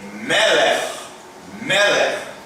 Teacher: Então, e lembra que comentamos numa das aulas que quando eu tenho dois segóis juntos, a sílaba tônica vem aqui sobre a primeira, então eu leio Melech, Melech.